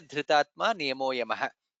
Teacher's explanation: Dha is Mahaprana there.